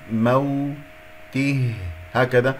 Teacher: أقف على ها يجري فيها الصوت والنفس ساكنة باهتزاز الأوتار الصوتية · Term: واو لين